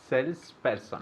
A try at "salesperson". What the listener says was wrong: there's an s in the middle sales person but it's just one word one word